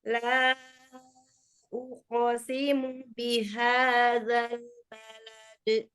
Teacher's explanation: Qaf sukun, tebalkan lagi, tapi qalqalahnya dia tetap keluar, enggak uqo, enggak di dalam, uqasimu, keluarkan.